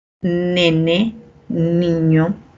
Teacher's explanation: Y la N de nene, niño, también es alveolar.